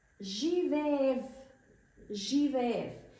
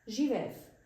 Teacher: One thing that I want to mention here is that the last consonant, the last letter here, V, is pronounced as F actually.